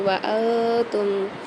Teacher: نون ساکن کے بعد 15 حروفوں میں سے تا آ رہی ہے تو یہاں پر غنہ کر کے پڑھیں گے۔ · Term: اخفاء مع الغنہ